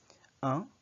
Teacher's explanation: It's as if you're pronouncing the Filipino word ang, A-N-G, but there's focus on nasality of the N. It emanates more from the nose, and the sound is cut short. It's not that long. So instead of saying ang, you say un café.